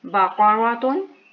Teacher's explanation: قاف بہت موٹا ہے قاف زبان کی جڑ سے، اور را تھوڑی موٹی ہے اور یہ دونوں باریک ہیں۔